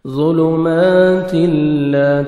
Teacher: ظا کو موٹا کر کے پڑھنا ہے، میم کو مرکھڑا زبر ہے، 1 سیکنڈ کھینچیں گے میم کو۔ ظلمات اللہ، تنوین کے بعد حروف یرملون میں سے لام ہے، ادغام کریں گے بغیر غنہ کے ساتھ۔